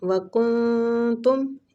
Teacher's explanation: وکنتم اخفاء حقیقی ہو رہا ہے، نون کو چھپائیں گے